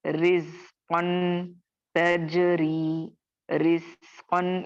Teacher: रॉ को हम बारीक अदा करेंगे